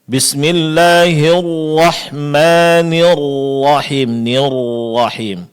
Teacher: Padahal huruf rnya berbaris fathah sehingga dia baca bismillahirrahmanirrahim nirrahim. Ro ditebalkan, tapi kesalahannya adalah kedua bibir dimonyongkan. Padahal roada berbaris fathah yang seharusnya kedua bibir dibuka ini malah dimonyongkan sehingga bunyi fathahnya tidak sempurna. · Memonyongkan kedua bibir di saat melapalkan huruf ra